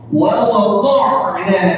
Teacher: Wa do na ya wa do na ain di sini. Di halq, di tenggorok